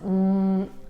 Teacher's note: So the lips are closed, but the vibration is felt in the upper part of the skull.